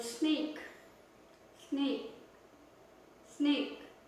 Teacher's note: By unvoiced sounds, we mean the sounds when we pronounce them, when we utter them, when we say them, we use the front of our mouth only, and in this case we can feel air coming out of our mouth, and this air comes straight out of the lungs, and in this case you won't feel any vibration in your throat